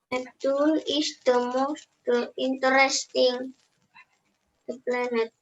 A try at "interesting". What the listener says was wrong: Don't forget, we only say 3, so not interesting. Interesting.